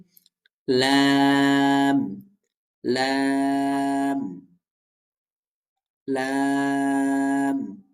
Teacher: জিহ্বার আগার কিনারা সামনের উপরের দাঁতের মাড়ির সঙ্গে লাগাইয়া। জিব্বার আগার কিনারাটা লাগবে।